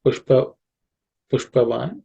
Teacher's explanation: Sh is the cerebral sh.